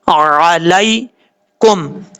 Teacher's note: عین کو اپنے مخرج سے ادا کرنا ہے اور حمزہ کی آواز نہیں آنی چاہیے